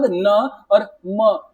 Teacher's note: Next आपका बोलो य, उसके बाद ण, उसके बाद न और म, बोल के देखो, बोलोगे तो समझ में आएगा कि हमारा जो प्रेशर पड़ रहा है वो किसके ऊपर पड़ रहा है, नाक के ऊपर पड़ रहा है, नोज के ऊपर पड़ रहा है। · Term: नासिक्य वर्ण